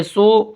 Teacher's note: سین واو پہ سو، اس کو ہم تھوڑا کھینچ کے پڑھیں گے ایک الف کے برابر کیونکہ یہ واو مدہ ہے